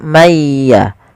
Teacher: mayya sambil ditahan suara gunahnya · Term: idgham